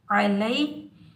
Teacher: یہ یا لین ہے، اس کو ہم نرمی اور جلدی سے ادا کریں گے، بغیر جھٹکا دیے ادا کریں گے ، بغیر کھینچے پڑھیں گے، یا ساکن سے پہلے جب بھی